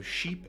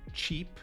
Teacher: sheep and cheap are almost the same, but one uses sha and one uses cha, the affricate